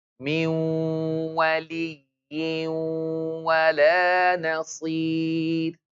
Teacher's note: Take the sound to the nose and stretch it. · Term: idgham with ghunna